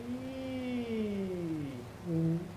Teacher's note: so she's hypophonic she's breathy